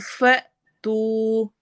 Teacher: फ झटका देना है, तू पे वाव मद्दा हो रही है